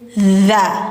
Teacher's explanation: Mad thoriq wama adr kamat thriq [Musik] ma jaiz munfasil ma jaiz munfasil wama ad ro [Musik] memantul lahirnya ya qalqalah wazal dza lidah ujung gigi atas kayak digigit dza tidak za hati-hati bukan zat tapi dza wazzal jannatu ditahan dulu Karena nunnya bertasydid dengung dulu.